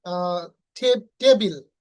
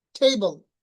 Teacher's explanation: ওরা টি কে ঠ উচ্চারণ করে।